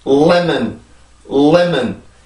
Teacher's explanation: 이 발음은요, 음절의 구분이 레몬이 아니고요, 한국어로 쓰면 램온입니다.